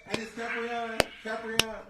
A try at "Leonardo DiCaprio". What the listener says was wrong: It's not Caprion. It's an O. It's Leonardo DiCaprio.